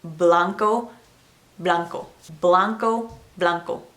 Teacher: Blanco, blanco. It's just more of a VB mixture type of sound, not a complete hard B.